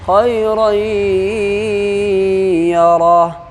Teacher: 2 زبر کی تنوین کے بعد حروف یومین کے 4 حرف میں سے یا ہے، اس لیے اس کو گنہ کے ساتھ ملا کر کے پڑھیں گے۔ اس کو ادغام ناقص کہتے ہیں یا تو ادغام مع الگنہ، یعنی گنہ کے ساتھ ادغام کریں گے، ملائیں گے۔